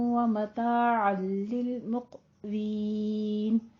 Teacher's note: मताअन लिल में इदगाम बिला गुन्ना, यहाँ पे गुन्ने की आवाज नहीं आएगी, बिला गुन्ने के मिला देंगे, मुकम्मल तौर पे इदगाम कर देंगे। मुक़वीन में कौफ के ऊपर कलकला करना है